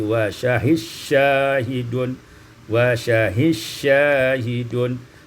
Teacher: idghamud dal fi shin, diidghamkan dal pada sin menjadi wa syahis syahidun, wa syahis syahidun.